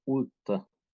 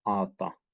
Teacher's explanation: Chuvash corresponds with an u to common Turkic a in the first syllable.